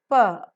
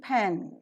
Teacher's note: The articulation point of view, the soft palate is raised to shut off the nasal passage of air. A complete closure is formed in the oral cavity by a firm contact made by both the lips, so that the air pressure is built behind the closure and the air coming from the lungs is held up in the oral cavity.